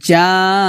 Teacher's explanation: 4 আলিফ টান দিয়ে নুনকে ধরবে এবং নুনিকে গুণনা করতে হবে